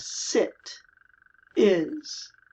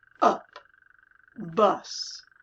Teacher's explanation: The short I is a little bit more closed, and the short U is a little bit more open.